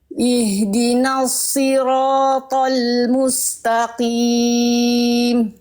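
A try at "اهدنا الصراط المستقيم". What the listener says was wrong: sekali lagi Bundanya tebalkan sedikit lagi pangkal lidahnya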